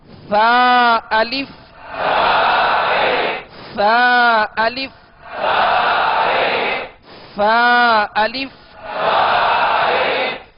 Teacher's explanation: لہذا ادا کرتے ہوئے سرا زبان یعنی ان تین حروف میں سا زال و جو کہ نرمی کے ساتھ ادا کیا جاتے ہیں، ان میں سختی نہیں ہوتی، سیٹی کی آواز نہیں ہوتی، اور ان کا مخرج ہے سرا زبان اوپر کے دو دانتوں کا اندرونی کنارہ